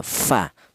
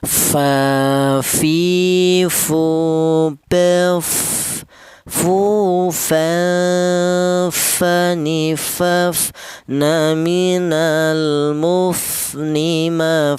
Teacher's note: keluarnya huruf berasal dari hanya satu bibir bawah yang bagian dalam menyentuh ujung gigi seri atas ya, fa. Fa fi fu bef fu fa fani faf na minal mufni ma fi fa fani fa. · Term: huruf fa